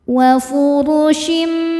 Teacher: Huruf ra dibaca secara tafkhim karena harokatnya di atas dhammah. Cara bacanya ditebalkan.